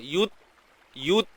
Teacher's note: Huruf ta yang mati ni kita kena tahan suara dulu. Yut. Tahan suara. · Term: sifat syiddah